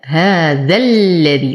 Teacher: ذا لدي ما الطبيعي، لكن أنظر للحرف الذي بعده حرف مشدد، إذن تلاقى لفظا مد طبيعي وحرف مشدد، فيسقط حرف المد بسبب التقاء الساكنين، فأنتقل من فتحة الذال إلى تشديد اللام